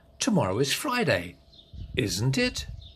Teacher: If you're not sure of the answer and you want confirmation, the voice goes up on the question tag.